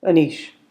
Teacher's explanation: The word anish is stressed on the second syllable.